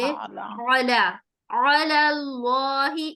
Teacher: صرف ہمیں اس لام کو موٹا کرنا ہے، علی، علی، عین کا مخرج حلق کے بیچ سے نکالتے ہوئے، علی، علی اللہ، اسلام کو ہم موٹا نہیں کریں گے، علی، علی اللہ.